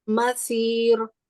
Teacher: سواد کو موٹا کرتے ہوئے را کو باریک رکھنا ہے.